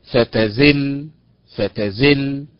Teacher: النبر فيها على حركه الزاي على حركه الزاي وليس على حركه التاء